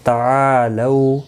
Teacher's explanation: آ الف مدہ ہے، 1 الف کی مقدار کے برابر کھینچ کر پڑھیں گے